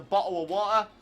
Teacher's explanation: people from the uk brits english people especially don't pronounce their t's